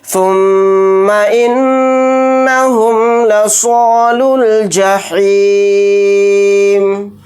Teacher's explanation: میم کے اوپر تشدید ہے تو اس کے اندر غنہ کر کے پڑھیں گے، پھر نون کے اوپر تشدید ہے تو اس کے اندر بھی غنہ کریں گے